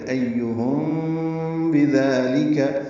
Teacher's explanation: ایہم حمزہ کو یا سے ملائیں گے، ہا کو میم سے ملانا ہے، میم ساکن کے بعد با آنے کی وجہ سے اخفاء شفوی ہے، تو ایہم بذالک، میم ساکن کے بعد با آنے کی وجہ سے میم اور با کے درمیان ملاتے ہوئے آواز چھپائیں گے، ایہم ہونٹوں میں، اس کو اخفاء شفوی کہتے ہیں، اور با میں ہونٹ ملا دیں گے.